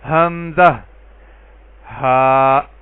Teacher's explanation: یہ دونوں حروف اقصی حلق یعنی حلق کے آخری حصے, سینے کی طرف والے حصے سے ان دونوں حروف کی ادائیگی ہوگی